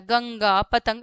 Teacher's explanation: अनुस्वार का ओनली नाक से होता है